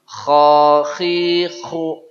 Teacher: Makhraj dia di tenggorokan atas.